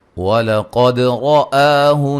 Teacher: قاف کو موٹا ادا کریں گے، دال پہ قلقلہ، اور را کو موٹا ادا کریں گے، مد اصلی ہے.